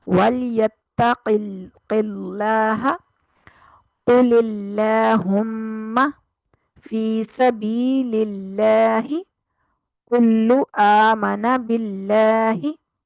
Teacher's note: لام کو باریک پڑھنا ہے جب اس سے پیچھے زیر ہوگی، اور لام کو، اللہ کے لام کو موٹا پڑھنا ہے جب اس کے پچھلے حرف پر زبر یا پیش ہوگی۔